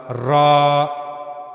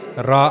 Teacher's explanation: जबान की नोक का ये ऊपर वाला हिस्सा ऊपर के सामने के जो दो दांत हैं उनके पीछे के मसोड़े से जाकर मिलेगा वहां से रा अदा होगा।